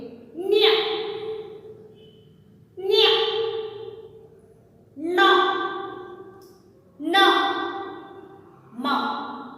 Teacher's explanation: ಅನುನಾಸಿಕ. ಅನುನಾಸಿಕ, ನಾಸಿಕ ಎಂದರೆ ಮೂಗು, ಮೂಗಿನಿಂದ ಉಚ್ಚರಿಸಲ್ಪಡುವ ವ್ಯಂಜನಾಕ್ಷರಗಳು.